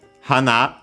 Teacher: hana accented on the last mora means flower